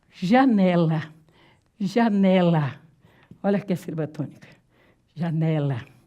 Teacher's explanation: a sílaba tônica aparece na penúltima